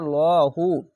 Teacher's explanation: অক্ষরে যদি জাবার বা পেশ উপরে থাকলে মোটা করে পড়তে হবে লহু ল মোটা করে পড়বেন